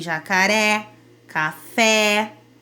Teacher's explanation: O acento agudo deixa a boca mais aberta, como em jacaré, café.